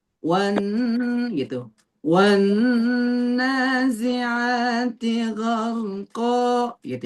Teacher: Karena suaranya ada di sini. Jadi caranya ketika akmal dia ditahan dan didengungkan.